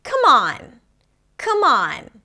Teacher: The stress is on the second part of the phrasal verb.